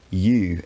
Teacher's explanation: this kind of fronting sound change is actually happening to the ooh vowel for a lot of english speakers today so i find myself saying u instead of u sometimes bear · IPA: [u]